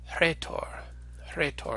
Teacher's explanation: when Rho is at the beginning of a word it has a sort of special property which is that it always comes with an H sound attached to it and makes instead a sort of aha sound an example of